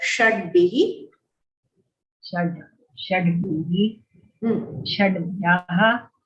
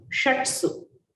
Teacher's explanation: So when bha comes, the ta will become da.